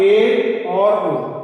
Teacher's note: इसी प्रकार से इसके बीच का स्वर होता है अर्धसंवृत, जिसमें न तो जीभ ज्यादा ऊपर उठती है और ज्यादा नीचे होती है। तो अर्धसंवृतों में आता है स्वर ए और ओ।